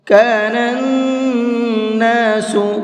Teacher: نون کے اوپر تشدید ہے تو اس نون کے اندر غنہ کر کے پڑھیں گے